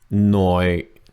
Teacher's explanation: low tone right after the high tone